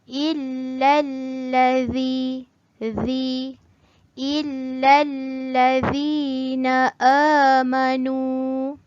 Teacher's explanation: huruf zal murid mesti keluarkan sedikit ujung lidah tu